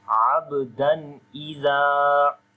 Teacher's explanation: We make izhar here because the rule is after the noon sakin or tanween, if the next letter is one of from 6 throttle letters, so we make izhar there like we make the clear sound of noon.